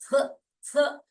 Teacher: आपकी जीभ जो है बीच में आ रही है, और आपके वोकल कॉर्ड में एक वाइब्रेशन होता है